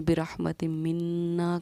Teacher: میم پر تشدید تھی تو غنہ کیا، نون پر تشدید تھی تو غنہ کیا